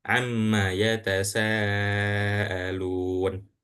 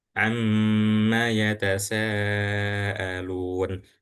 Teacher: pasti menahan huruf mim yang setelah di setelah huruf ain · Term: ghunah